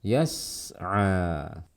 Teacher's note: sin bersifat rokhwa dan dia bersifat sofir, dibaca dengan desis yang jelas dan alirkan suaranya